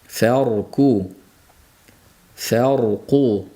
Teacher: Bu yerda ham demak far bo'lib rayimiz yo'g'on, fa ingichka talaffuz qilinadi.